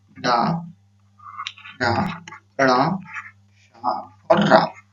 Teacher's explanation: मूर्धन्य से उच्चारण करते हैं ये सभी वर्ण